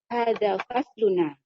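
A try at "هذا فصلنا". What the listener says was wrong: Bukan hada fasluna, hada fasluna. Fasluna, naknya panjang. Ulang.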